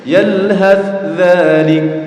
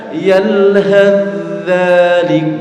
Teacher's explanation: Tapi yang benar harusnya yalhath dzalik. Jadi tha-nya masuk ke huruf dzal.